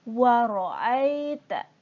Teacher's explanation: Dibaca ai, bukan ae.